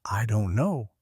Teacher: If you say, I don't know, with a flat voice, it sounds bored.